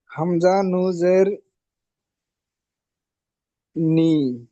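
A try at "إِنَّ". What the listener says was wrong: হামজা নুন জের নি কেন হবে? হামজা নুন জের নি হয়? হ্যাঁ, হামজা নুন জের ইন।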